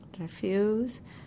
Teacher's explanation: The stress is in the U